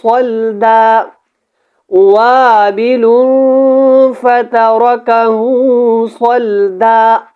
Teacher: اب یہاں پہ میں نے جب وقف کیا تو ایک زبر کو الف کے ساتھ ملایا ہے، دونوں زبروں کو نہیں پڑھنا، وقف کی صورت میں الف کو ملا کے ایک زبر کو آپ نے پڑھنا ہے